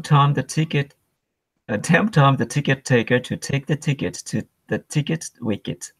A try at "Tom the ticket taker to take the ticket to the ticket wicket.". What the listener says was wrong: Good. Isn't it kind of fun to say?